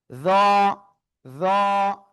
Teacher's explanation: জিহ্বার আগা উপরে দুই দাঁতের আগায় লাগিয়ে একটু মোটা আওয়াজে আমরা উচ্চারণ করব।